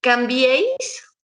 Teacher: es una secuencia de tres vocales que están en una misma sílaba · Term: triptongo